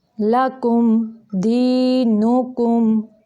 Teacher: لام باریک ہے اور کاف کے اوپر پیش ہے، کاف بھی باریک ہے